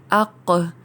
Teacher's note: اس کو حمزہ لگا کر پرناؤنس کیا جائے تو قوف پر ادا کیا جاتا ہے موٹا اور حلق کی گہرائی سے، اق، جبکہ کیف حمزہ کے ساتھ جوڑ کر اک ادا کیا جاتا ہے، یعنی اس کو باریک ادا کیا جاتا ہے۔